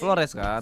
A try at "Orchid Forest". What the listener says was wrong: Forest, Forest bukan nggak pakai L. ya.